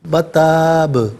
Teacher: اور ناظرین و سامعین جب بات ساکن کریں گے نا تو یہاں قلقلہ ہوگا، یعنی لوٹتی ہوئی آواز محسوس ہوگی